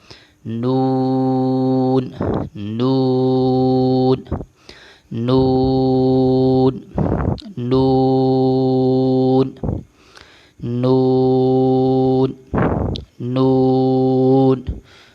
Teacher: زبان کی نوک اور کروٹ کا کچھ حصہ اوپر والے دو دانتوں کے مسوڑوں سے لگے تو یہ ادا ہوگا نون۔ نون کو ادا کرتے وقت ہونٹوں کو گول کیا جاتا ہے، نون نون نون نون نون نون۔